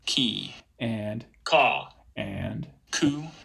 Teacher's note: I've got myself producing voiceless velar stops here in three different vowel contexts